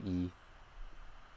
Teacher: English E it's a little bit further back and lower